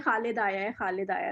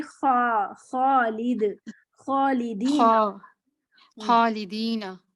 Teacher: जैसे उर्दू, ये देखने में बिल्कुल उर्दू जैसा है, कुछ कुछ है भी उर्दू जैसा, लेकिन उर्दू वाले खौ में हम इतनी खरखराहट नहीं लाते जितना इसमें लानी पड़ती है, क्योंकि इसे वाजे कर, इसे हमने जी काफ से फर्क करना है।